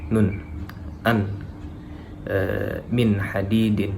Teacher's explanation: izharu halki ini dibaca jelas ya, alias tidak dengung. dan penyebutan nunnya itu juga masih jelas ya.